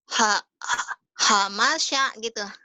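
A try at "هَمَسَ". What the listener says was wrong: Ha, masih itu masih ada desahnya. Hamasya.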